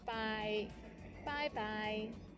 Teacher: in casual situations it sounds like the English bye bye but be careful to start with the first tone by followed by another one in the third tone